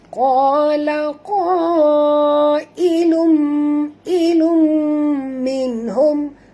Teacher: nun mati bertemu ha tak boleh dengung, izhar syafawi. · Kita kena masukkan bunyi tanwin ini terus ke dalam mim disertai dengan dengung. Ya, ini dinamakan idgham ma'al gunnah ya. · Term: izhar halqi